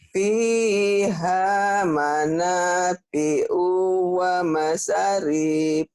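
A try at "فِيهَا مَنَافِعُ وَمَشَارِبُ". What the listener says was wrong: Bukan. Pi panjang, ha panjang, na panjang, O-nya pendek. Ini pendek. Pendek. O-nya pendek. Wa masya. Shin-nya gede ya. Wa masya. Shin. Wa masyarib. Fiha manafi'u wa masyarib.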